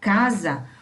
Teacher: quando a gente pronuncia a palavra casa, o S, ele sai com som de Z, porque o fonema é o Z